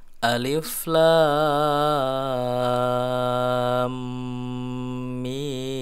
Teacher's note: Jadi ini tidak dibaca alama tapi dibaca huruf asli hijaiyahnya. Ini alif ya, alif dibaca tidak panjang, alif pendek saja. Kemudian lamnya ini dibaca 6 harokat ya. Ini namanya adalah mad lazim mutsaqal harfi ya, dibaca 6 harokat.